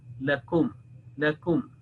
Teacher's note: So this is a meme sakin, but according to the transmitted rules of Tajweed al-Quran, one is not allowed to make elongation here, not making a nasal sound or gunna